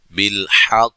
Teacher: قاف مشدد ہے، قلقلے کو خوب واضح کرنا ہے